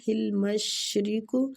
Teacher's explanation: شین باریک سیٹی والا